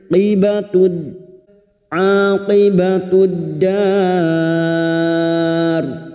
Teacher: Lam ta'rif yang tidak bersukun atau alif lam yang bertemu dal idgham syamsiyah masuk pada huruf dal